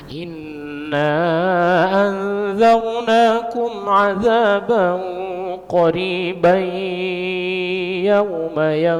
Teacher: Dia kalau disambung dia menjadi idgham bi gunnah, tanwin an bertemu ya.